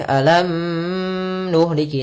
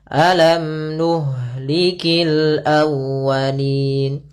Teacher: Izhar berarti mimnya jelas, tidak boleh ditahan. Tidak boleh alam nuhliki, enggak, tapi langsung saja alam nuhlikil awwalin. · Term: izhar syafawi